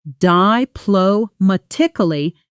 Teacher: the stress lands firmly on ma, and the ending softens quickly, almost swallowed in fast speech. Diplomatically becomes something closer to diplomatically, with the final syllables barely there.